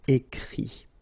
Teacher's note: Remember that even if you've got this final T, you don't pronounce it, so it goes like écrit, okay.